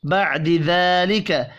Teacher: مم، یہاں بھی غنہ ہوگا. بعد ذالک، ذال کھڑی زبر کی وجہ سے ایک الف کے برابر کھینچ کر پڑھا جائے گا